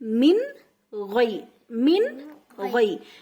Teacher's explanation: تنوین یعنی 2 زبر یا پھر 2 زیر یا پھر 2 پیش، تنوین یا نون ساکن کے بعد حروف اظہار میں سے کوئی حرف آ جائے تو نون کی آواز کو ظاہر کر کے بلا غنہ کے یعنی بغیر غنہ کے پڑھنا چاہیے، جیسے میم نون زیر من، غین یا زبر غی۔